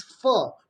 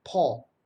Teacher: the labiodental is fur, whereas a bilabial is paw. And the two pronunciations are different.